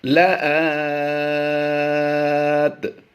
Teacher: کھڑی زبر کو ہم نے زیادہ کھینچ کر پڑھنا ہے۔ لآت وَهُوَ السَّمِيعُ الْعَلِيمُ، یہاں پر عین کی ادائیگی آپ نے خصوصی توجہ کے ساتھ کرنی ہے۔ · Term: مد عارض